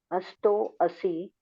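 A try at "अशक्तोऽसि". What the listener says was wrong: Ashto asi. It is shakara. Is it shakara? Then you are not saying sha. You are saying sha. You are saying shakara only. You are not saying sha. A is there. This is a. This is sha. This is to. To, not to also. To. Then si.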